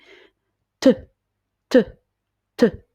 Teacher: Vous avez la langue qui fait juste un aller-retour rapide au niveau du palais. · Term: le son T